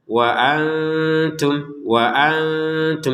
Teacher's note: Antum di sini nun sukun ketemu ta, ya kita baca dengan samar ya.